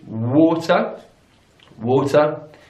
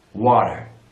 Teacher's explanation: notice the vowel sounds there in British English is war war and in American English it's wah-wah